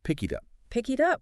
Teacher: The K at the end of pick just bridges right over to the I in it.